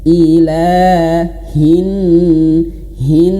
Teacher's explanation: Huruf H yang berharokat kasroh atau bergaris bawah ini langsung masuk ke huruf nun yang bertasydid.